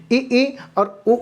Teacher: मुख जो है लगभग बंद रहेगा